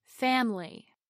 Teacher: Now, let's look at the word family with its three vowels of a, i, and y. The stress is on the first syllable, fam. Over time, the vowel I relaxes so much that we drop the whole syllable and turn it into family. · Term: word stress